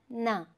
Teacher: நாக்கினுடைய நுனியும் பல்லினுடைய அடிப்பகுதியை தொடும் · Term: ரெண்டு சுழி நா